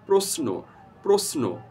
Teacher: উচ্চারণে আসবে দন্ত স এর মতো এস এর যে উচ্চারণটি